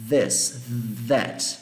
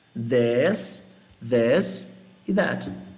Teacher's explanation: É um som com a ponta da língua entre os dentes. Aí você dá uma vibrada, como se fosse um som de V com a pontinha da língua entre os dentes.